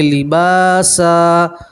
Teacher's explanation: दो ज़बर की तनवीन के ऊपर आप वक़्फ़ करेंगे तो दो ज़बर की तनवीन को अलिफ और ज़बर से बदलेंगे